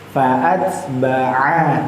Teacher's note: ain itu bunyinya makhrajnya terletak di pangkal tenggorokan bagian atas.